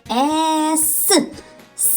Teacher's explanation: цей звук Довго тягнеться але немає голосу тому звук с є приголосним вимовляється твердо тож це твердий приголосний малюємо одну рисочку ескі кі